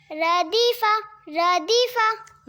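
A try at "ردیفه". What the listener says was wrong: ردیفہ. رو. رو کو موٹا پڑھنا ہے.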